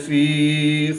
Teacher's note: یا ساکن سے پہلے زیر ہے تو یا مدہ ایک الف یعنی 2 حرکات کے برابر کھینچ کر پڑھیں گے